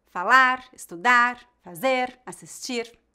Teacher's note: tem a tônica na última sílaba Essas palavras são chamadas oxítonas